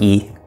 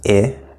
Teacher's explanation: we talked about E which was very closed talked about it which was a little more open